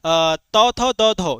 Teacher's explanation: त थ द ध ये सभी दंत से, त थ द ध, है ना।